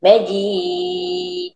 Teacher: Bila nak berhenti kena matikan huruf dal tersebut. Bila huruf dal mati kita kena lantunkan dia. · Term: Qalqalah